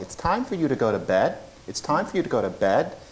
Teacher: If a Martian heard that, they'd think the person was saying bad. The vowel is shifting.